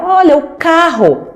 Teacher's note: o fonema que tem a representação do C e o fonema que é representado pelos dois R's ou pelo R inicial, que faz esse som, eles são produzidos aqui na parte de trás do meu trato articulatório, né? Na minha garganta, na minha glote.